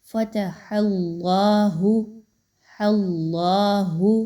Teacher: أَتُحَدِّثُونَهُمْ بِمَا فَتَحَ اللَّهُ، حرف جلالہ اللہ سے پہلے ہا کے اوپر زبر ہے، تو اللہ کے حرف کو پر پڑھیے، ہا کو باریک ہی رکھیے۔